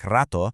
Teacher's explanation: if the r is at the beginning of a word like rato or doubled like ko, it becomes a much stronger, heavier throat hit.